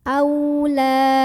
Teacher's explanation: La di sini ada mad tabi'i karena ada alif yang sebelumnya didahului huruf berbaris fathah. Maka cara membunyikannya dipanjangkan lamnya 2 harokat.